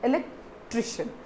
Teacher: you have to stress on the syllable tri